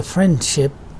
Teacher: When you don't pronounce d and you say friendship while speaking little quickly, this leaving out d sound again will be called elision